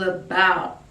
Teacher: the start of the word is like a schwa sound